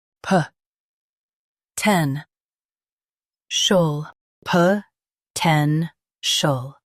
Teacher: Stress ten and keep shul soft.